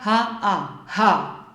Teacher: Ihr hört es, wenn ich es sage, dann hauche ich mehr oder weniger den Buchstaben ha. Mit meinem Ausatmen spreche ich den Buchstaben aus, spreche aber auch ein deutlich hörbares A. H, weil wenn ich nur machen würde, würdet ihr nichts hören.